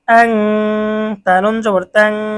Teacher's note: এখানে নুন সাকিনের পরে ইকফার হরফ তা এসেছে, গুন্না সহ অস্পষ্ট পড়তে হবে। অস্পষ্ট গুন্না কেন? কারণ এই গুন্নাটা নাকের থেকে আসে।